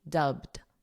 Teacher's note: So this ed is a very soft d, dubbed. So you have to go from a b directly to a soft d